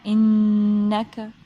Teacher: lips جو ہے ہم جوائن کریں گے، ملائیں گے، ہونٹوں کو ملا کر ناک کے اندر سے آواز آئے گی وائبریشن کی طرح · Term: غنہ